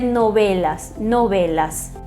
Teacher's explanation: E o V, na maioria dos países, tem um som mais puxado para um B. É um intermediário entre V e B, os lábios semi-abertos, né, não muito pressionados, e vai se dizer novelas, novelas.